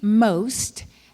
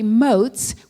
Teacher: the t and s have changed in their order